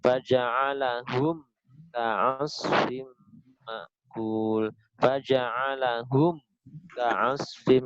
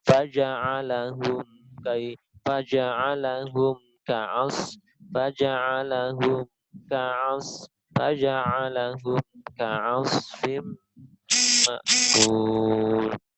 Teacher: Jadi hum ke ka ya hampir nyambung, hum ke ka nyambung dengan sifat tawasud dan gunah pada huruf mim